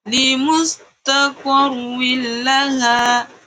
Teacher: Idgham bila gunnah tanwinnya tidak didengungkan.